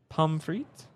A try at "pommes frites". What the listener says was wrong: Pommes Don't say the S. Pommes frites.